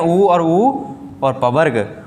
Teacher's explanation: ओष्ठ है, ओठ से जो बोले जाते हैं